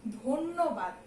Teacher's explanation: ধয়ের সঙ্গে কিন্তু একটা ওকার যুক্ত হয়ে যায়।